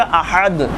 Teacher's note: आखिरी लफ्ज़ है इस आयत का अहद, हा इस्तेमाल हुआ है दरमियाने हलक से